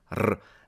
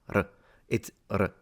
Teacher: Because in Italian, at least, there is a distinction in pronunciation between the single R and the double R, whereby the double R is really strong, R, and the single R is a much shorter and less intense sound